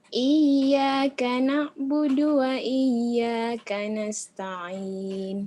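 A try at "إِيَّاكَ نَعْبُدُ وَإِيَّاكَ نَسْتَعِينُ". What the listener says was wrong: Bagus tapi tinggal ainnya ya. Ainnya kurang sedikit. Iyyaka na'budu wa iyyaka nasta'in gitu. Ain.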